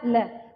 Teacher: ल बोलेंगे तो ऐसा लगता है जैसे कि जो वायु है हमारी जिह्वा की दोनों ओर से क्या निकल गई है, बाहर की ओर निकल गई है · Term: पार्श्विक व्यंजन